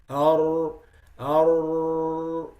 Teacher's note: So in the case of the ra, the sound flows normal until it gets to the tip of the tongue and it gets narrowed and pushed only in that small opening. Ar, you could see it. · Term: al-inhiraf